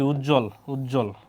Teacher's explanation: যুক্ত ব্যঞ্জনের সঙ্গে বফলা যুক্ত হলে ব এর উচ্চারণ হয় না